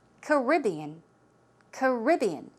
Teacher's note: the stress goes on the second syllable